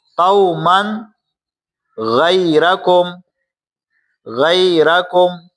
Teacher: تنوین کے بعد حروف حلقی میں سے غین آ رہی ہے، لہٰذا یہاں پر بھی ہم غنہ نہیں کریں گے